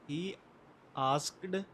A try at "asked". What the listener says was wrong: आस्कड नहीं, आस्क्ड ट दे नाल।